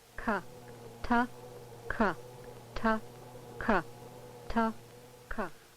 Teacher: For example, the stop plosive sounds, T and K, are differentiated primarily by the fact that the tract obstruction on T is between the tongue and alveolar ridge, while for K, it is between the back of the tongue and the undersurface of the hard or soft palate